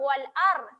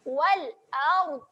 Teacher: Kita naikkan tepi lidah ke geraham atas. Dia akan menghasilkan bunyi wal ard. Naikkan. Wal ard. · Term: sifat bagi huruf dad